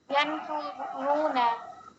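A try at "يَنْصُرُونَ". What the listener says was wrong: हाँ, आपने यन सा बोला, यहाँ पर सा नहीं है, सू है।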